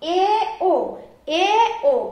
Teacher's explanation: এই দুটি স্বরধ্বনি উচ্চারণ করতে গেলে আমাদের জিহ্বাটা উঁচু থেকে একটু নিচে অবস্থান করছে, এই জন্য এই দুটি স্বরধ্বনিকে আমরা উচ্চ মধ্য স্বরধ্বনি বলবো।